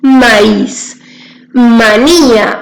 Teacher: la vocal cerrada la y es la que lleva la mayor fuerza